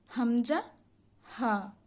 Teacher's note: হা একদম পেটের ভিতর থেকে উঠে আসবে কন্ঠনালীর শুরু